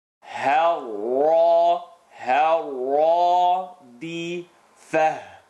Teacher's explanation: ha light, first part of the throat, ra heavy